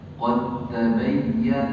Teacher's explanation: Tulisannya ada dalnya. Dibaca tanpa dal.